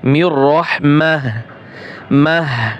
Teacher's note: ওয়াকফের জায়গায় যদি গোল তা হয়, তাহলে সেটা হা হা হা উচ্চারণ হয়, মিয়র রহমাহ মাহ।